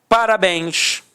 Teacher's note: repare que a sílaba tônica é a última e é terminada em en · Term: oxítona